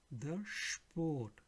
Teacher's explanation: So wherever you see SP written, it will sound like again SCHP